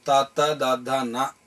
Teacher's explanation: ఇవి దంతము ఉత్పత్తి స్థానంగా కలిగిన అక్షరాలు కాబట్టి వీటిని దంత్యములు అని పిలుస్తారు